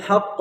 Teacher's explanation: قاف جو ہے ساکن بھی ہو جائے گا رکنے کی حالت میں اور قلقلہ بھی ہوگا